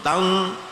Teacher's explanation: tal agak moncong, tapi jangan kemoncongan ya. Jangan tul, itu namanya kemoncongan. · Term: tafkhim